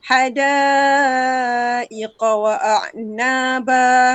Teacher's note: Hada itu 4 atau 5 harakat. Dia satu perkataan tu. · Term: mad wajib muttasil